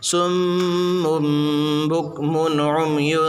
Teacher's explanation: میم کے اوپر دو پیش کی تنوین، تنوین کے بعد با ہے اس لیے قلب ہوگا، گنہ اور اخفا کے ساتھ پڑھا جائے گا